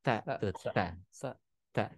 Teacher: ngucapkan huruf ta itu dengan ada ada percikan udara